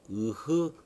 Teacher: 이응과 히읗은 혀와는 전혀 상관이 없이 목구멍이죠. 목구멍 안에서 나는 소리고요